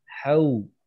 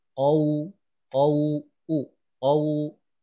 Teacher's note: Jadi wawu sukun sebelumnya fathah ini yang keluar adalah bunyi U.